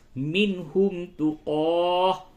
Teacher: نون ساکن کے بعد ہا ہے، اظہار ہوگا